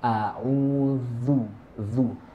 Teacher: Jadi ujung lidah itu berada di antara gigi atas dan gigi bawah. Gigi depan atas dan gigi depan bawah. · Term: za